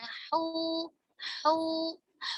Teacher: Ketika harokat dhammah tetap ada hembusan nafasnya.